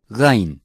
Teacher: Gain is articulated from the top of the throat close to the empty space of the mouth. It is a strong consonant.